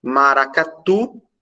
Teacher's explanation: Seduzir, termina em i, oxítona termina em i, não tem acento. Maracatu, a sílaba tônica é tu, oxítona terminada em u